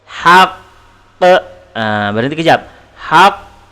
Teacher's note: Al-haqqu kalau kita waqafkan ataupun kita berhentikan, maka terjadilah qalqalah akbar.